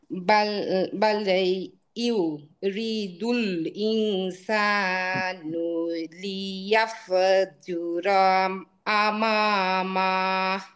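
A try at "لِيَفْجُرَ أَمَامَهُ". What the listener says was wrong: ইয়াফা, ইয়াফা হয়ে যাচ্ছে, ইয়াফ, ক্লিয়ার ইয়াফ। হ্যাঁ, আপনি কলকলা করে ফেলছেন। লিয়াফ, লিয়াফ। হ্যাঁ, লিয়াফ।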